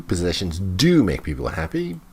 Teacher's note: Notice the stress on do.